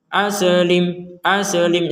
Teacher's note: Nah sebagaimana huruf Dal sukun enggak boleh dipantulkan Sin sukun mim sukun enggak boleh juga dipantulkan